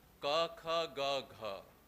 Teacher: ka, kha, ga, gha sounds are velar. They are articulated in the same way.